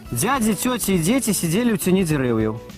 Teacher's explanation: мы прызвычаіліся вымаўляць замест мягкага «д» «дзе», а замест мягкага «т» «це»